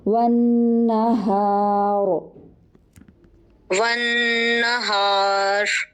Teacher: را کو موٹا کیجیے اینڈ میں کیونکہ را ساکن ہے, ما قبل الف پر بھی ساکن ہے, ما قبل ہا کے اوپر زبر ہے تو یہ را موٹا پڑھا جائے گا.